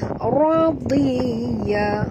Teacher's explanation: Bi radiya, ra ni juga baca tebal, ra baris atas, ra tafkhim namanya. Radiya, huruf dad walaupun di baris bawah kita kekalkan makhraj tebalnya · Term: huruf dad tebal